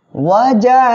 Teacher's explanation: অ জবর ওয়া, জিম আলিফ জবর জা, একালিফ মদ, জবরের বামে খালি আলিফ একালিফ মদ, একালিফ মদের পরের অক্ষরে একই শব্দের ভিতরে হামজা আসে, এখানে মধ্যে মুত্তাসিল হবে, 4 আলিফ টেনে পড়বেন